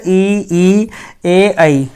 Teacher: जीभ का अगला भाग ऊपर उठता है, अग्र स्वर कहलाते हैं।